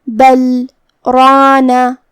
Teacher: را پہ زبر ہے تو اس کا حکم ہے تفخیم. ہمیں را کو بھاری آواز میں پڑھنا ہے. یہاں مد الف ہے.